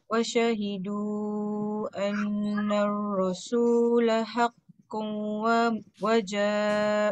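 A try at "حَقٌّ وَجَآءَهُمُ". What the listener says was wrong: Haqqun. Haqqun tu tak dengung.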